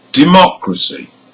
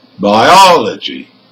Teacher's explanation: the stressed syllable is the third from the end